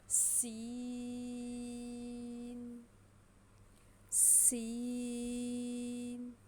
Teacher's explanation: سین کی آواز تھوڑی سی تیز سیٹی کی طرح تیز ہوتی ہے، اس کو ہم نے سین پڑھنا ہے، موٹا نہیں کرنا۔